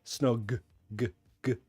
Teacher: There's a vibration in the throat. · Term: voiced sound